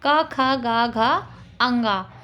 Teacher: ये कंठ वर्ण होते हैं और इनका उच्चारण स्थान कंठ होता है